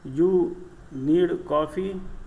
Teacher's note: the voice rises and goes up at the end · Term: Intonation